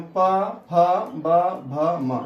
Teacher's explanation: इनके उच्चारण में ओष्ठ की सहायता ली जाती है, अर्थात आपका दोनों ओष्ठ सट जाते हैं, इसलिए इसको ओष्ठीय वर्ण कहते हैं।